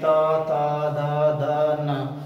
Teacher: जब हम त का उच्चारण करते हैं तो हमारी जीवा का अगर भाग हमारे दांतों को टच कर रही है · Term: दंत वर्ण